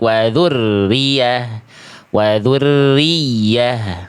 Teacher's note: Nabr itu menekan suara huruf ya lebih kuat sehingga nada pada huruf ya itu lebih menonjol, lebih tershow off. · Jadi yang ditekan bukan ro-nya. Yang ditekan kuat ya-nya, jangan terbalik. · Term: tasydid